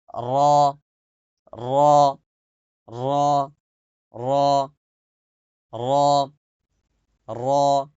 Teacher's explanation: এরপরে আসেন 10 নং মাখরাজ, জিব্বার আগার পিঠ, মানে জিব্বার আগা তার উল্টা পিঠ যেটা আছে, উল্টা পিঠ তার বরাবর উপরের তালুর সঙ্গে লাগিয়ে উচ্চারিত হবে র, র, র, র, র, র।